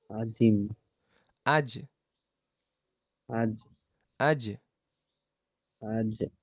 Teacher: উপরের তালুর সাথে লাগবে জিবার মাঝখান বরাবর একদম মাঝখান বরাবর